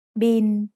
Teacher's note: It's the word bill, but we read it in Thai as bin. Thai doesn't naturally have the L sound at the end of a syllable, so it changes to sound like the letter N.